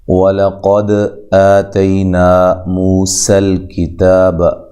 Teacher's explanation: واو کو ادا کرتے ہوئے ہونٹوں کو گول کرنا ہے، لام کو باریک پڑھنا ہے۔